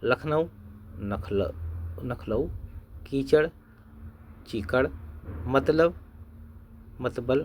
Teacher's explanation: एक शब्द की विभिन्न ध्वनियों के विपर्य की प्रवृत्ति दक्षिणी की एक प्रमुख विशेषता है